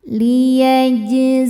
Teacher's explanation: Cara bacanya dipantulkan dengan pantulan yang kecil. Liyajzian. [bernyanyi] Alif lamnya dinamakan alif lam syamsiyah. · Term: qalqalah sugro